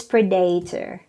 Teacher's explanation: it is pronounced as predator stresses on the first syllable